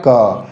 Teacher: जब हम क को उच्चारित करते हैं तो क में हमारा वाइब्रेशन कम लगता है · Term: अघोष